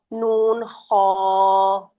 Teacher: اس میں ہونٹ بھی آگے نہیں لے کے آنے اور زبان سے بھی نہیں، اس کو حلق سے ادا کرنا ہے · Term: حروف حلقی